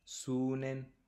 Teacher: Noten aquí que el verbo sud pierde, por decirlo de alguna manera, la T final y luego adhiere el sufijo.